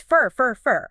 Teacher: The full or sound just vanishes into that little schwa.